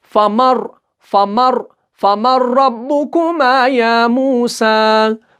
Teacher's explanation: ہم نہیں پڑھتے نون کو، ہم میم کو اس را کے ساتھ ملا رہے ہیں